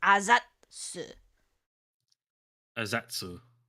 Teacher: You have like a it's like a zat. So that tiny tsu is this T noise kind of. So it's azatsu. Azatsu. But you don't have the T actually come out. You say azatsu.